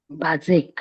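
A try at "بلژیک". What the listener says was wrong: लाम है वो अलिफ नहीं है, बेल्जिक है।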